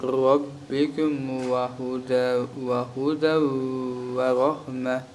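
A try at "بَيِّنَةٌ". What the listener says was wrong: Еще раз. Байинатун, тину не надо, коротко.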